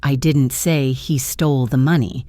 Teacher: the emphasis on I suggests that maybe someone else said it, but not me.